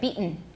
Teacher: you have to have a really clear strong glottal stop there